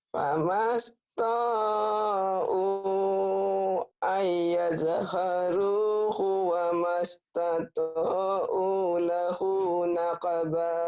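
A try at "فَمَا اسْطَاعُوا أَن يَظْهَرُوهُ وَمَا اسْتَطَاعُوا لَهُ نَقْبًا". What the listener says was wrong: Panjang to'nya. Wa mastata'u lahu naqba. Wa mas. Iya, wa mastata'u lahu naqba.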